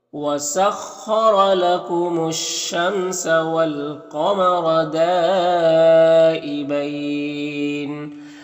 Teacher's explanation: خا حروف مستعلیہ میں سے پر پڑھیں گے، را کو پر زبر، را کو پر پڑھیں گے.